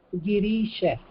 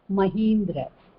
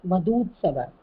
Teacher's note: The 2 letters of the same kind join together and they become dirgha. They become the long one. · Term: savarna dirgha sandhi